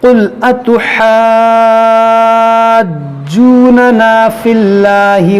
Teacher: الف مدہ ہے، الف سے پہلے زبر ہے اور اس کے بعد جیم پر جو ہے سکون اصلی ہے، تو یہاں پر ہوگا مد لازم